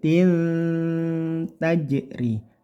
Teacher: ini tanwin bertemu Ta ini namanya ikhfa ikhfa bacakan samar dan dengung dengungnya e samarnya bersiap ke huruf ta jadi samar tidak n